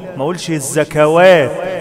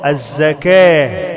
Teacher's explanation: بنقف على التاء المربوطة بحولها الهاء والواو لا تنطق ما قولش الزكوات خطأ الزكاة يخافون يوما تتقلب فيه القلوب والأبصار